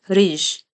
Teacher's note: The syllable is unrounded. The vowel in the syllable is unrounded. It makes the unrounded sound.